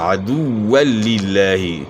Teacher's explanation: جس طرح عام طور پہ پڑھتے ہیں تو واؤ کا اصل مخرج جو ہے دونوں ہونٹ ناتمام گول کرنا ہے، ہونٹ گول کرنے سے ادا ہوگا عدو للہ.